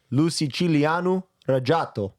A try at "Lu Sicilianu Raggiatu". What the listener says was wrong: Bro, you got it wrong. It's Lu Sicilianu Raggiatu. You said Raggiato. You got the Sicilianu part right, but you got to say Raggiatu, not Raggiato.